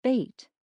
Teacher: bait has a long vowel that is pronounced with the tongue about midway in the mouth